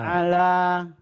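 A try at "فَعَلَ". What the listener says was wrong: Kenapa panjang? Nggak ada yang panjang.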